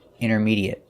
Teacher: We don't say intermediate, we say intermediate. And the AT at the end is pronounced et. There's no ate sound, it's short et